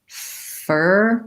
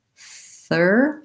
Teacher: an accent pattern where you're making an F instead of a TH